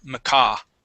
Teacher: So the stress is at the very end.